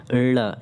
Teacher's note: जैसे ळ है, ळ जब इनका आप उच्चारण करते हो साथियों, तो आपका जो जिह्वा है ना, जब जिह्वा जो है ना ऊपर उठकर कहाँ मूर्धा में स्पर्श करती है और उसके तुरंत बाद कैसे नीचे गिरती है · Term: उच्छिप्त व्यंजन